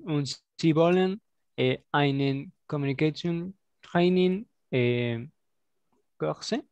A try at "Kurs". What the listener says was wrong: Kurs. Ja, sin la E. Kurs machen.